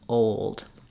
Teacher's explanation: the dark l has the vowel uh before it and when I move from an O to another vowel I have to do vowel to vowel linking